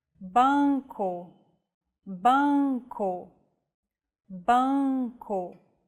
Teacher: let the air pass through both your oral and nasal passages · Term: nasal vowels